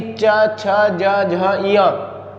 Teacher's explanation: ऐसे ही च, छ, ज, झ, इया, यानी कि जो चा वर्ग है इसको बोलने पर क्या होता है, जो चा वर्ग को हम बोलते हैं या उच्चरित करते हैं तो जो मेरी जिह्वा है, जीभ कहाँ लगती है, मुंह में ऊपर, यानी कि तालू की छत में लगती है, मुख की छत में, अर्थात तालू को स्पर्श करती है, इसीलिए इनको कहा जाता है तालव्य व्यंजन।